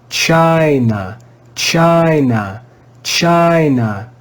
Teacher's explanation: after the letter i is a single consonant the letter n you can also hear when we read the word that the first syllable is stressed